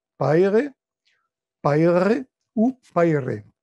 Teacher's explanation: Les consonnes R, fricatif uvulaire, R roulé uvulaire ou R roulé alvéolaire sonore sont phonétiquement des sons différents, mais leur différence n'est pas fonctionnellement pertinente.